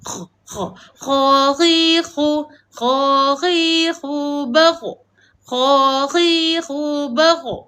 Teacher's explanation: sebutan huruf kha kita nak sebut apabila kita macam nak buang kahak. Dia di kawasan atas halkum kita.